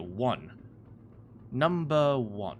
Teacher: It starts with a vowel, but the pronunciation doesn't start with a vowel. It starts with a W.